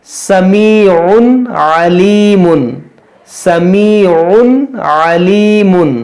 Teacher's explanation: یہاں پر دیکھیے یہ تنوین ہے، دو پیش کی تنوین کے بعد عین، عین حروف حلقی ہے، تو یہاں پر ہم اظہار کریں گے، آگے پڑھیں گے، غنہ نہیں کریں گے